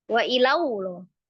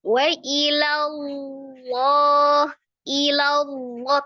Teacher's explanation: Niat kita lam, tapi mulutnya membentuk makhraj waw, ya jadilah waw.